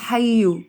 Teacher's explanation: اس کے بعد حیو، یا کے اوپر شد ہے، اس لیے اس کو دبا کے ادا کیا جائے گا شدت کے ساتھ۔ بعض لوگ اسے حیو پڑھ جاتے ہیں، وہ غلط ہو جائے گا۔